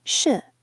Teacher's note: The fourth tone is a falling pitch, marked with the grave accent, such as in shi.